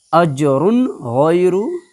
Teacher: तनवीन की आवाज़ को बिल्कुल ज़ाहिर करके बगैर गुन्ना के पढ़ेंगे